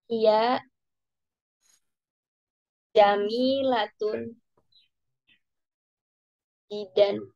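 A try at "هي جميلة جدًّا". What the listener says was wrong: Iya, jiddan. Ada tasdid di sini dalnya ya. Jiddan.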